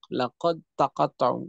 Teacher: Laqad dalnya hilang masuk ke dalam ta. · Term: idgham kamil